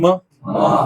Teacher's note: यांचा उच्चार करताना तुम्हाला नाक मोकळच पाहिजे